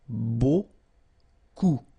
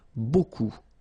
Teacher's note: Remember, you don't pronounce the final P, okay? And then you get this combination of vowels, E, A, U, and you get the sound O.